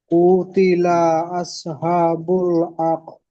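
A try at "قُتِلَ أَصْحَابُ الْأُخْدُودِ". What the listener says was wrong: কুতিলা, কফটি টান দিয়ে ফেলেছেন, কফ পেশ কু, হারাকাতে টান হয় না। কুতিলা আসহাবুল, আসহা খাড়া যাবার একালি টান দিয়ে বলবেন। কুতিলা আসহাবুল, উখ হামজা খ পেশ উখ, এখানে ওয়াহ পড়েছেন, ওয়াহ হবে না, উখ। উখ দুদ বলেন। উখ দদ হবে না, উখ দুদ। দাল ওয়াও দাল পেশ দুদ, দাল ওয়াও পেশ দু, এটি ও মাদ্দা।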